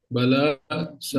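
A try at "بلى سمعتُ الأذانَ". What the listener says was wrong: नहीं, समी, मी यहाँ पे ई आता यानी कसरा आता है, समय तू अल आदाना,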